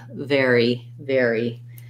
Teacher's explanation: it has the air diphthong so building from air then put your v on there and lastly a tense e sound very very you also can try just airy to get that